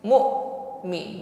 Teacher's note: hamzah sukun ditekan dan sifatnya syiddah. Jadi tertahan aliran suaranya. Mu'mi, bersih, bukan mu'mini.